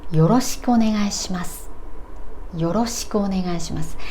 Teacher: It's usually translated as nice to meet you or it's good to see you or something like that, but we say this as an expression よろしくお願いします and here し and s at the end are devoiced